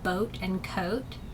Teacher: combination of two adjacent vowel sounds within the same syllable they begin with a vowel sound and then end with a glide sound